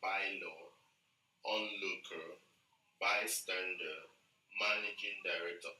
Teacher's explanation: All these words are noun and they are compound words. So the stress is put on the first syllable.